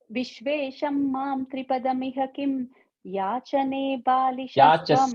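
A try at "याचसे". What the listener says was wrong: Yachase, say. Yachase, not yachane.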